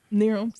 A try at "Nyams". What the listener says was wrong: Nyams. That says Nyams. There's no R in there.